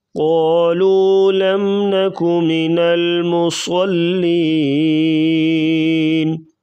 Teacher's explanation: صاد کو پر پڑھا جائے گا